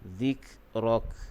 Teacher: Kemudian zik, huruf kaf, makhrajnya di pangkal lidah